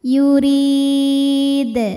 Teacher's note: huruf ro dibunyikan secara tarqik sebab barisnya di bawah yaitu berbaris kasrah maka dibacanya tipis pangkal lidah datar